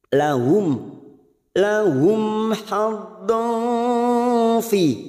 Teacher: Mim sukun bertemu ha kita baca jelas tanpa mendengung. Namanya bacaan idhar safawi.